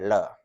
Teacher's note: इसे विशेष प्रकार से लिखा जाता है, ल को ही जो नीचे खुला हुआ हिस्सा है, बंद हिस्सा बंद की तरह बना के ल को लिखते हैं और इसका उच्चारण ल और ड़ के बीच होता है, ळ। ल को यदि आप दंत की जगह मूर्धन्य बना के बोलें, यानी जीभ के अगले हिस्से को मूर्धा में सटा के बोलें, तो यह ध्वनि उच्चरित होती है